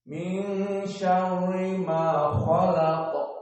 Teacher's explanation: karena nun sakinah ini bertemu dengan sya, maka al-Arab memindahkan makhraj dari lisan kepada khaysum, yakni kepada hidung, karena ikhfa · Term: ikhfa hakiki